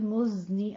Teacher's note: मुज में आपने थोड़ी सी सीटी की आवाज हल्की सी लानी है, ज्यादा नहीं लानी, ठीक है।